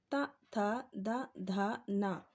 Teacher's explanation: उच्चारण स्थल दंत है, इनको हम दांतों से बोलते हैं